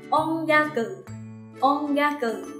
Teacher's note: Ga lại thuộc vào hàng phụ âm g. Mình sẽ áp dụng theo quy tắc biến in thành ng. Vậy là sẽ đọc thành ongaku. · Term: âm mũi